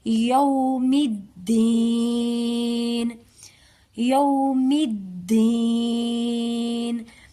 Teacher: آگے ہے یومی، اس کو ہم یو بھی نہیں پڑھیں گے، یعنی کہ ہم یا کی آواز جو ہے نا وہ او کی طرف نہیں مائل کریں گے، بلکہ یا کی آواز کو ہم یو کی طرف مائل کر کے پڑھیں گے. یو نہیں پڑھیں گے، ہم پڑھیں گے یوم الدین. · یہ میم دال مشدد ہے، آگے میم کو دال مشدد کے ساتھ ملائیں گے